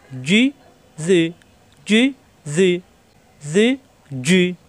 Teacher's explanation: জিব্বার মাঝখানে উপরে তালুতে চাপ দিয়ে জি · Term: জিমজের জি